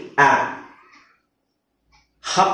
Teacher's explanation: ಯಾ ಅಂತ ಹೇಳ್ತಿದ್ದಾರೆ okay so ಇವೆರಡು ತಪ್ಪು ಇದನ್ನ ಅಭ್ಯಾಸ ಮಾಡ್ಕೋಬೇಕು ನೀವು ಯಾ ನು ಅಲ್ಲ ಹ್ಯಾನು ಅಲ್ಲ ಇದು ಬರಿ ಆ ಗಾಳಿ ಹೊರಗಡೆ ಬರಬಾರದು ಆ ಅದೇ ಎಚ್ ಹೇಳ್ಬೇಕಲ್ಲ ಇದು ಹೆಚ್ಚು ಹೇಳಬೇಕಾದರೆ ನೀವು ಗಾಳಿ ಹೊರಗಡೆ ಬರಬಹುದು